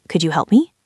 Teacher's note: Try to feel your voice going up like a little bird taking flight at the very end of the sentence. · with a rise at the end, it sounds friendly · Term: rising tone